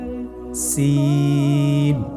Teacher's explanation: সিন কোন জায়গা থেকে উচ্চারিত হয় ছবিতে দেখতে পাচ্ছেন জিহ্বার আগা সামনের নিচের দুই দাঁতের পেট ও আগার সঙ্গে লাগিয়ে উচ্চারিত হয় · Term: সিনের মাখরাজ